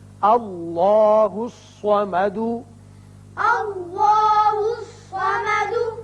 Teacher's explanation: الف پر زبر ہے لہذا اس میں اللہ کا لام پر کر کے پڑھا جائے گا. اسی طرح صاد حروف مستعلیہ میں سے ہے، یہ پر ہوگا.